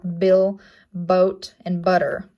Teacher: It is a bilabial placement. It's voiced, and it shows up in words such as like bill, boat, and butter, making the b sound, and it'll be written as the lowercase b. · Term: stop consonant